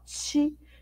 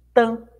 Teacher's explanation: O T faz meio que um chiado, né? Quando a gente junta com o i, ó, ti, diferente do tan, né, que é um som mais estalado.